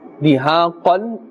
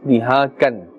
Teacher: If we say dihakan, then it's incorrect because we are confusing the qaf, which is supposed to be made with a full mouth, with the kaf. And the kaf has a more gentle and thin sound. Kan and qan.